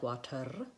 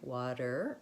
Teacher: is moving up and making your are in the front and what you need is your tongue to be making the R in the back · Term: American R sound